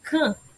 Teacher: E o som do C você ouviu, mas você não ouve aí o som do N separado do som do A. É como se eles fossem um som apenas. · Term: som nasal